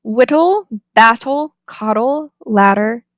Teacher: we have the alveolar tap. It's somewhere between a t and a d. It generally occurs in words with an intervocalic T or D digraph where the first syllable is stressed.